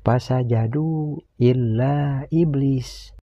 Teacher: Namun mad tabi'i ini menghadapi huruf alif di lain kalimat dan ditandai dengan alis yang tipis. Maka kedudukan mad tabi'i ini berubah menjadi mad jaiz munfasil yang harus dibaca panjang. Panjang bacaannya 6 harakat.